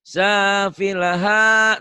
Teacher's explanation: Sa sama ha yang panjang